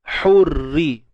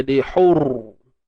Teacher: Jadi huruf ra ni kita tengok dia hidup dan dia berbaris bawah, maka perlu dibaca dengan nipis semestinya.